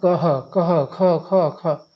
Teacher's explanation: ख जब आप बोलेंगे तो आधा क आता है और ह आता है, ठीक ना। तो महाप्राण क्या होता है, इसमें हमको अधिक ऊर्जा लगानी पड़ती है और अधिक संघर्ष करना पड़ता है।